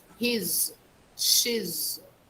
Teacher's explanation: with the pronouns he and she we make a sound of z